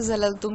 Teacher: اس میں ز سیٹی کی طرح سے پڑھا جائے گا، سیٹی کی آواز نکلے گی